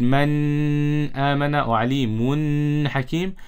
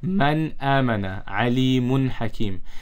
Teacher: we have to read the nun sakin or tanween clearly without ghunna. Man amana alimun hakim. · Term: izhar